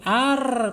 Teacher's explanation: Tawasud itu tertahan tidak sempurna, mengalir tidak sempurna ketika diucapkan, dan inhirab takrir ya, takrir bergetar tetapi tidak boleh bergetar melebihi dari 3 getaran